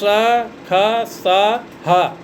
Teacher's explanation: ये श्रा खा सा हा, ये 4 वर्ण हैं जिनको ऊष्म व्यंजन कहते हैं। यानी इनका उच्चारण करते समय गर्म हवा बाहर निकलती है, इसलिए इसे ऊष्म व्यंजन कहते हैं।